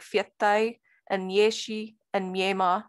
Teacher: not aspirated you also have parallelization and labialization in this language all consonants are palatalized before front vowels